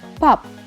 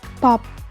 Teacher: When you say P, you're breathing out. But when you say silent P, you do not have to breathe out. You just have to close your mouth and keep it in that position.